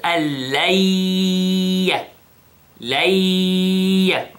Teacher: So the noon basically is hidden, okay, and we pronounce the lam with shadda, alla, alla, okay, and then we have idgham bi ghunna, 2 seconds